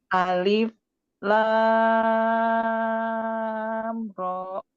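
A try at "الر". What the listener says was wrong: Nah, ro-nya kepanjang. Alif, lam, ro.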